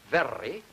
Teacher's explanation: you have more than one flap that gives a trill